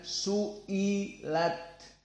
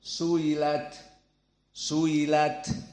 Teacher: Arab di sini tidak membaca Hamzah dengan jelas maka ditashil alhamzah